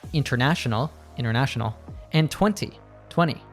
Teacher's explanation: Usually, when we have an N and T together, we drop the T sound. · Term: the NT combination